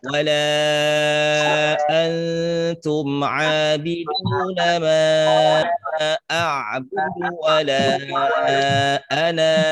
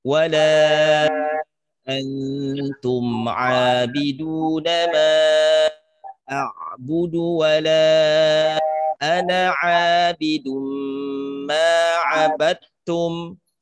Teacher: Ketika kita berhenti di ana, maka bacanya jadi panjang. Tapi ketika kita wasolkan, kita teruskan pada kata ana ini, maka nanya jadi pendek.